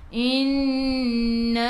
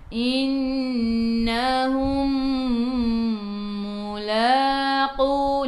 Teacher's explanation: mim bertemu dengan mim idgham mithlain, masuk ke dalam mim yang kedua dan dengung 2 harakat. Innahum mulaqu, la 2 harakat, ada alif kecil mad asli.